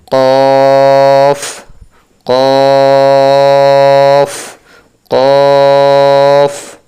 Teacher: জিহ্বার গোড়া তার বরাবর উপরে তালুর সঙ্গে লাগাইয়া দুই নক্তাওয়ালা কফ